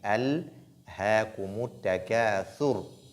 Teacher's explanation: Alhaakumut takathur. N'oubliez pas que la lettre lam porte sukun. On ne dit pas donc allez. On ne fait pas de l'agitation, de qalqala. On dit alhaakumut takathur.